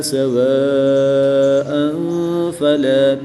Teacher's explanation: 2 زبر کی تنوین کے بعد فا حروف اخفا میں سے ہے تو یہاں پر اخفا کریں گے، یعنی غنہ زمانی کر کے پڑھیں گے۔